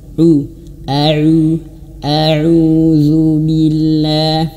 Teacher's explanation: ketika damah mulut harus ee apa manyun moncong u